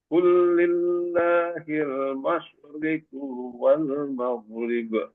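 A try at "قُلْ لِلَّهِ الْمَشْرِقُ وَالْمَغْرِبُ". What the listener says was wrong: Ya, kunya dibaca pendek, Mas Rikuwal langsung. Rinya, roknya dibaca tarkik, maghrib, maghrib, jangan maghrib.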